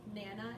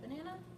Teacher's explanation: unstressed syllable deletion where a weak syllable is taken away